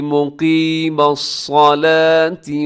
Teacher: मुक़ीमा काफ मोटा पड़ा जाएगा, सलात में सौद मोटा पड़ा जाएगा